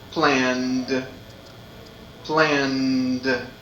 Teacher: So, when we want to use the past, ed, we need to use a sound that also is voiced. So we use d, d, because it's easier to use a voiced sound and another voiced sound.